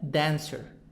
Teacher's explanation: the stress in the beginning of the word then dancer the sound is high in the beginning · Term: syllable stress